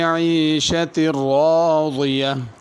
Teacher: را کو بھی پر پڑھنا ہے، ضاد کو بھی پر پڑھنا ہے۔